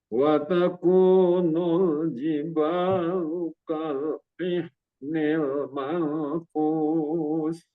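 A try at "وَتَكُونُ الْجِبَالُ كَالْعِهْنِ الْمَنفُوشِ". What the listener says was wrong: Mau ditahan lagi ikhfa'nya. Mau fushnya sya lagi.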